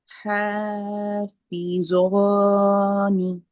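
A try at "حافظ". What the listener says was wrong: না, হাফিজ, নট জ।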